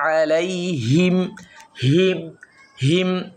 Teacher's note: সিরাতাল্লাযীনা আন'আমতা আলাইহিম, আন'আমতা আলাইহিম, অনেকে হিম নাকে দেয়, অনেকে আলাইহিম হিম নাকে দিয়ে পড়ে, এটাও ভুল, আমরা নাকে দিব না।